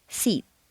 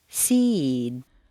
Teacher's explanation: Unvoiced, seat. Voiced, seed.